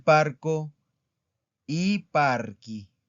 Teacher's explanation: No se pronuncia chi, se pronuncia ki. Entonces sería il parco i parchi.